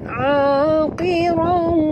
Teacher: jangan baca a tapi baca huruf ain betul-betul sebut. Aqirau.